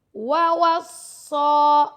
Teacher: سواد کو موٹا بھی پڑھنا اور اس کے اوپر کھڑا زبر ہے تو اس کو لمبا بھی کریں گے 2 سیکنڈ تک. ووصا, بی ہے, بی کو لمبا نہیں کرنا, ہا کو کریں گے کیونکہ اس کے ساتھ الف مد آ رہا ہے.